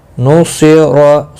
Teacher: صاد مستعلیہ ہے، پر پڑھیں گے، را زبر کی وجہ سے پر پڑھا جائے گا